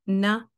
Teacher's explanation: ही कम duration है की हम ना जैसे कहते हैं तो नाक से आवाज़ आई लेकिन ये एक तरह से फुल नहीं होती है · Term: गुना क्वालिटी